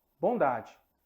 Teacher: o d é a sua correspondente sonora é a sua correspondente um pouco mais Branda ao ser pronunciada